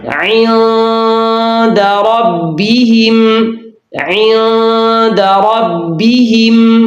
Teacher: یہاں زبر کی آمیزش نہیں کرنی بلکہ زیر کو معروف ادا کرنا ہے اور اس کی آواز کو جھکا کر پڑھنا ہے۔